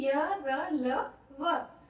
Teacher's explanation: जब हम इनका उच्चारण कर रहे हैं तो जो हमारी जीभ है वो हमारे मुंह के किसी भी भाग को ठीक तरीके से स्पर्श नहीं कर रही। पूरी तरह से स्पर्श नहीं कर रही। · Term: अंतस्थ व्यंजन